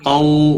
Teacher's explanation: قو واو ساکن سے پہلے زبر ہے، لین کہلاتا ہے، واو لین تھوڑا نرمی کے ساتھ کھینچ کر پڑھیں گے۔